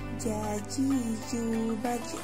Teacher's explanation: Melafalkan huruf Ja dilafalkan dengan menyentuhkan tengah lidah ke daerah langit-langit. Ketika mati, suara harus memantul.